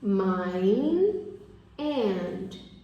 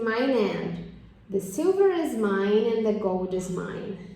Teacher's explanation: mine, termina com esse som de N, a palavra mine. E a próxima é and, que também começa com o schwa, que é uma vogal.